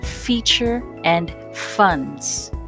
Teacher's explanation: position the lower edge of your upper teeth upon the lower lip and then slightly blow with a voiceless breath lastly use the lower lip to control the flow of the